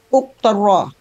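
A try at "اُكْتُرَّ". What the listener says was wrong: Ukturro pakai tasdid.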